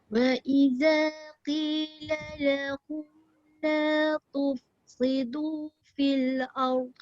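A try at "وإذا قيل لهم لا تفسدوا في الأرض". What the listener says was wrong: Kejap ta pastikan dia baris depan tu jangan jadi ta. La tuf. Nipiskan. La tuf.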